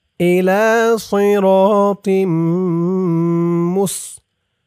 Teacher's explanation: অক্ফ করার কারণে জেরের পরে ইয়া সাকিন এক আলিফ টানটা 3 আলিফ টান হয়ে গেছে